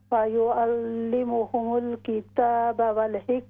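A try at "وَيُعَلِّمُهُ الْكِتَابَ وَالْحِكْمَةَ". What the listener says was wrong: यहाँ पर वयुअल्लिमुहुल किताब, वयुअल्लिमुहुल किताब, अक्सर कॉलर्स ने जो है यहाँ पर गलती की, वयुअल्लिमुहुमुल, तो यहाँ पर हा है सिर्फ, इसके साथ मीम नहीं है।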